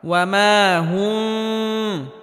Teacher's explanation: বাকি কোনো জায়গায় গুন্না হবে না স্পষ্ট করে পড়তে হবে অর্থাৎ মিমে হালকা আওয়াজ জারি রেখে উচ্চারণ করতে হবে তবে গুন্নাহ করা যাবে না